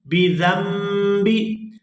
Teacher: نون ساکن کے فوراً بعد اگر با آ جائے تو وہ نون جو ہے وہ میم کے اندر کنورٹ ہو جاتا ہے۔ تو یہاں نون ساکن کے فوراً بعد با آ گئی ہے تو اس نون کو اب میم ادا کریں گے۔